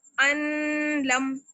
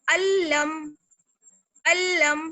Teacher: ہم اس کو اس طرح سے نہیں پڑھ سکتے، ان لم، نہیں، یہ غلط ہو جائے گا. جلدی سے پڑھیں گے اور نون کی ساؤنڈ بالکل ختم کر دیں گے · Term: ادغام بلا غنہ